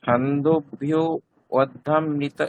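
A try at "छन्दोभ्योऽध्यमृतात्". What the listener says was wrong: ছন্দোভ্যোধ্যমৃত, ওখানে লুপ্ত আকার আছে, ওটার কোনো উচ্চারণ হবে না। হ্যাঁ, বাংলা দেখে পড়লে ওটা সমস্যা, লুপ্ত আকারটার উচ্চারণ হয় না কোনো।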